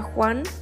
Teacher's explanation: es sorda porque no produce ninguna vibración en las cuerdas vocales · la lengua se aproxima al velo sin tocar y el aire sale rozando ambos órganos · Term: consonante fricativa